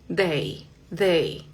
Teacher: En inglés esa D es un poquito más sutil. Vas a colocar la lengua un poquito detrás de los dientes.